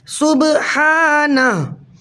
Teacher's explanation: محترم ساتھیو، آپ نے دیکھا کہ ہاں تو ساکن ہو گیا وقف کی وجہ سے، لیکن با ساکن حالت میں کلمے کے درمیان میں آ رہا ہے، تو یہاں قلقلہ صغریٰ ہوگا